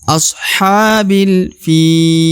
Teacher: huruf fi dipanjangkan 2, 4 atau 5 harokat karena ya akan berhenti ke ujung ayat ya